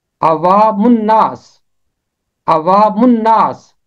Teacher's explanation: نون حرف شمسی ہے، جب بھی حرف شمسی ہے تو اس کے اوپر تشدید ہے، اور میم نون کے ساتھ ملے گا من۔ پہلا حصہ علیحدہ رہ جائے گا، اوا، یہ پہلا حصہ ہے، دوسرا حصہ بنے گا من، اور تیسرا حصہ ہے ناس، عوام الناس، عوام الناس۔